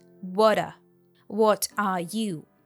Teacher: the T sound stands between the two vowels and turns into a du sound